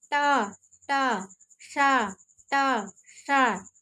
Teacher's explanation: जो षष्ठकोण वाला सा होता है, जिसको हम लोग कहते हैं मूर्धन्य सा, उसका मूर्धा है।